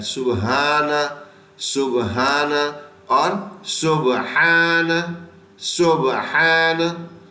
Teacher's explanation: یہ ہا درمیان حلق سے ادا ہوتا ہے